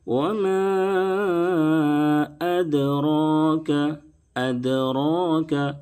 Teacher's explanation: اد، اد، اس طرح سے دال میں آواز کو لوٹائیں گے. را کے اوپر کھڑا زبر ہے، اس لیے را کو موٹا کر کے پڑھیں گے، پر کریں گے